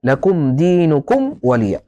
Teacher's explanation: هذا يسمى الإظهار الشفوي لأن الميم مخرجها الشفتين · يحذر القارئ من إخفاء الميم الساكنة عند الواو لاتحاد مخرجيهما. يعني إذا جاءت ميم ساكنة وجاء بعدها حرف الواو يجب أن تحذر من الإخفاء، لا تخفي، لأن الطبيعة تميل إلى الإخفاء، لكن القاعدة هي الإظهار.